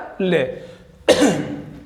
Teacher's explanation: पार्श्विक यानी जीभ के दोनों तरफ को हवा निकलती है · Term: पार्श्विक व्यंजन